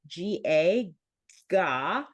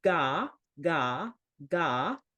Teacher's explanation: So the G sound, like GA, ga, actually lifts the back of our tongue.